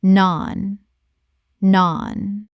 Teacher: Rhymes with barn. The vowel is long, like the A in father.